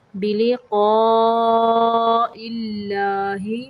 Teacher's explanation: یہاں پہ اللہ کا لام باریک پڑھیں گے کیونکہ اللہ کے لام کے پچھلے حرف کے نیچے زیر ہے